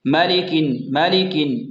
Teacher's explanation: میم، لام اور کاف کو بالکل لمبا نہیں کرنا، جلدی پڑھنا ہے